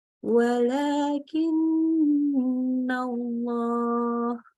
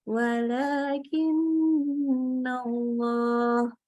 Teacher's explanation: Maka kita ketika nunnya tasydid, kita kasih gunnah sesempurna mungkin, baik ketika dia sedang dalam posisi di tengah-tengah, disambung, ataupun diberhentikan, diwakaf di akhir.